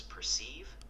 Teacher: The correct pronunciation is perceive with the emphasis on the second syllable.